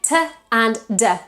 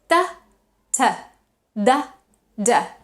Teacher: The tip of our tongue can't touch the teeth. They are alveolar, so they touch the part behind the teeth, which is called the alveolar ridge.